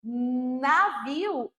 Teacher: Eu tenho a ponta do meu a ponta da minha língua tocando a raiz dos dentes de cima, os incisivos superiores.